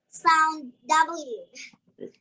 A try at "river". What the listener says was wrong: Oh, it wasn't quite as pronounced this time, but let's say the word a few times to get that V sound. River, river, river. Okay, be careful with those words that have a V in them. We don't want to hear a W sound, a W. We want to hear the V sound, V, V.